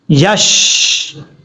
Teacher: یا کے بعد جو شین ہے، شین ساکن ہے، شین ساکن میں اکثر لوگ قلقلہ کر جاتے ہیں، ایسا نہیں کرنا، یشری نہیں پڑھنا، یش، اس طریقے سے۔